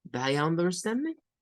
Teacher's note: la sílaba tónica es stand.